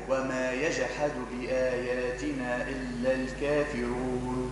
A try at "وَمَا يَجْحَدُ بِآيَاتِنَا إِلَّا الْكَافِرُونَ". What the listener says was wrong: فخم فخم ما تخافش من التفخيم. الكافرون رو رو رو أفصح.